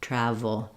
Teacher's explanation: It's made in the same mouth position as the F sound, the letter F, but my voice is on V, travel. And then finally we have our dark L. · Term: V sound